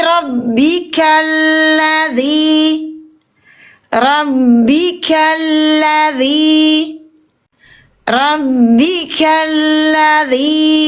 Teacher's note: Tapi kita wasol, jangan sukunkan. Langsung dari K ke huruf lam bertasdid.